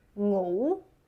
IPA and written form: ŋuː (Ngủ)